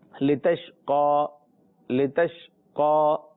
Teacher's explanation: قاف حروف مستعلیہ میں سے، اور اس کے اوپر کھڑا زبر بھی ہے تو کھینچیں گے بھی